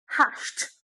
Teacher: You have sh no vibration, and that's why you say hashed. No matter how you try to say d, you can never get it.